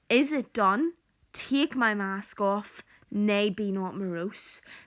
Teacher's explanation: So there we have a number of caesuras, pauses, which disrupt the rhythm and create a tone of rushed excitement and enthusiasm.